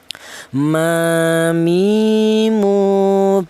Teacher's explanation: berasal dari kedua bibir yang rapat.